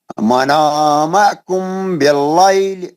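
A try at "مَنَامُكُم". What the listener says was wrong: منامکم نہیں، منامکم، میم پہ پیش.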